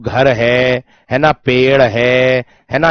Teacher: केवल मुख से उच्चारित होने वाला है आपका निर्नुनासिक